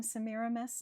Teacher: this name scans the same way, emphasis on the second and fourth syllables every single time